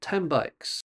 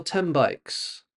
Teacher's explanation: You see, the N of 10 doesn't sound like N. It sounds more like M. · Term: Sounds that change